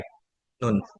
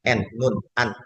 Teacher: lidah bertemu dengan gusi bagian atas